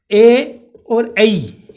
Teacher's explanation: जब आप ए और ऐ का उच्चारण करते हो तो आप कंठ और तालु का इस्तेमाल करते हो, ठीक है ना, कंठ और तालु का। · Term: कंठ तालु